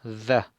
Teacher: la da, mordiendo la lengua un poquito